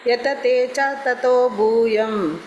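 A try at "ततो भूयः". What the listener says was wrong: ಮಾತಾಜಿ ಭೂಯಹ ವಿಸರ್ಗ ಇದೆ ಅಲ್ಲಿ ಭೂಯಹ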